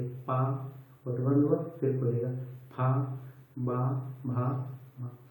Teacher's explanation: ओष्ठ वर्ण उसे बोलेंगे जिसमें हमारी जो होठ हैं एकदम से बंद हो जाते हैं और फिर खुल जाते हैं।